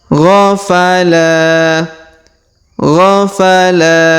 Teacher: huruf la kita panjangkan dua harakat karena di depannya terdapat Alif